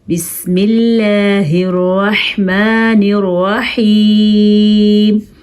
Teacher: अल्लाह का नाम बारीक पढ़ा है हमने और रहमान और रहीम की हा अदा करनी है, खौ या हा नहीं पढ़नी आपने।